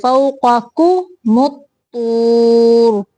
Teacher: فوق، قاف موٹا دوسرا کاف باریک ہے